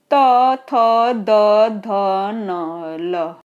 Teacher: देखिए दंत व्यंजन, जहां जिह्वा दांतों को स्पर्श करे, बिना दांत के स्पर्श की नहीं बोले जाएंगे।